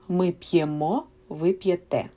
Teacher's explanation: In ми, ви, the stress is on the last syllable. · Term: traveling stress